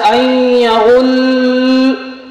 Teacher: اسی طریقے سے وہ کلمہ یا ایسے کلمات جن کا اخیر، جن کا ختم یا وہاں آیت لگتی ہو اور وہاں لام مشدد ہوتا، تو لام مشدد کو پڑھتے وقت 2 طرح کی غلطیاں ہوتی ہیں۔ نمبر 1، لام کو بہت زیادہ کھینچ دیا جاتا ہے